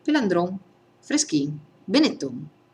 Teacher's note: in Veneto gli accenti sono tutti in fondo e tutte le N in fondo e velari, col dorso della lingua sul palato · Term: N velare